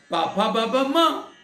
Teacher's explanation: मां बोलने के टाइम पे आप खाली होठ से मां नहीं बोल सकते हैं। नासिका को भी साथ में रखेंगे तो मां का उच्चारण होगा।